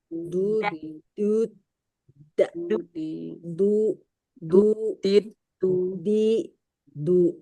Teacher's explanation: Ujung lidah kena pangkal gigi atas.